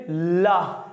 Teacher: ला बोलने में भी जीवा दांतों पे लग रही है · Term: दंत मूल व्यंजन